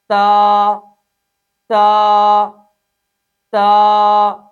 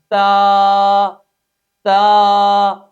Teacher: لہٰذا پہلا اصول یہ واضح ہوا کہ اس حرف کو سختی کے ساتھ ادا کریں گے۔ نمبر 2، اس حرف میں 1 الف کے برابر مد اصلی کریں گے، تا تا تا۔ نمبر 3، اس حرف کے اندر صفت استفال انفتاح بھی موجود ہے، اس لیے اس حرف کو خوب باریک ادا کریں گے۔